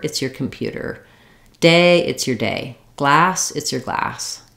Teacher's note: the it's your should be fast, unstressed, and reduced, and the thing that goes in the blank is our stressed word. That's the one that has the clear vowel and more length.